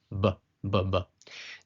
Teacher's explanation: making a bilabial /b/ sound, as in 'Basketball'. You use both your lips, /b/. Now when the dagesh is not present, as this example, it is called a VET, making a dental-labial sound as in /v/, so, in BET, /b/ sound as in 'Basketball' and VET, as in /v/, 'volleyball'.